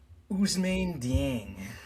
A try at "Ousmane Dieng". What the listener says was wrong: His name couldn't have been that hard to say. You have to go, Ousmane. Ousmane Dieng. Okay, you just put in too much emphasis on it.